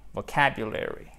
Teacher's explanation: Faites bien l'accent tonique sur la deuxième syllabe.